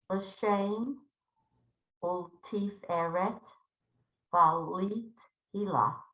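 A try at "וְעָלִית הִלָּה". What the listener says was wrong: Make it a short I. Valit Hila.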